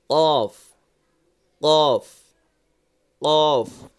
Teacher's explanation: জিহ্বার গোড়া তার বরাবর উপরের তালুর সঙ্গে লাগিয়ে উচ্চারিত হয় কফ। মনে আছে আমি বলেছিলাম যে জিহ্বার গোড়া উপরে, অর্থাৎ হলক শেষ হয়ে গেছে এখানে, আর এই সামনেই আপনার জিহ্বার গোড়া এখানে।